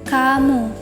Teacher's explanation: di tengah e kata vonum K dan G ini masuk dalam bunyi dorsovelar yakni pertemuan antara pangkal lidah dan langit-langit lunak